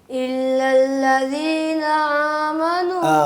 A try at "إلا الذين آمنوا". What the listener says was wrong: آمنو حمزہ پڑھنا ہے, اس کو عین نہیں پڑھنا. الا الذین الا الذین آمنوا